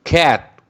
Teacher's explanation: वगरना जब इनकी soft sound होगी तो इनको हल्का पढ़ेंगे, जैसा कि cat, C is giving hard sound means aspirated, but T is giving the light and soft sound. cat, इसमें T के ऊपर स्ट्रेस नहीं है।